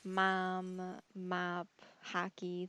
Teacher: apparently I sound kind of nasally when I say my short O words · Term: Michigan accent